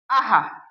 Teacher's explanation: इसे बोलते समय अंत में हा जैसी हल्की आवाज निकलती है और लिखते समय अक्षर के पीछे 2 बिंदी लगाई जाती हैं। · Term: विसर्ग